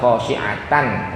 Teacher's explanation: Tanwin ketemu hamzah, dibaca khasyi'atan. Enggak boleh didengungin panjang. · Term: idhar